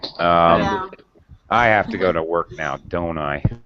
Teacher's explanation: if you use falling intonation, final falling intonation, you're asking for confirmation.